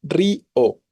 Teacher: Si yo dijera río, la o, la fuerte sería la tónica. Es más bien río y le doy la fuerza a la débil. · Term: hiato